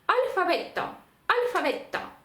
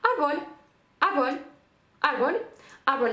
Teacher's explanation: це звук який посерединці десь між б і в ні то ні То